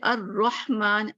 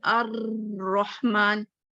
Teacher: تقریر کرتے ہوئے بھی انسان ہے بار بار ایک بات کرتا ہے، اور جس حرف میں یہ صفت پائی جاتی ہے اس کو حرف مقررہ کہتے ہیں، اور وہ را ہے جس کو ادا کرتے ہوئے آواز میں کپ کپی پائی جاتی ہے، جسے تکرار کا محسوس ہوتا ہے.